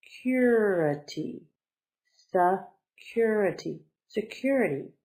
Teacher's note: 4 syllables. The accent is on the second one, so it's security.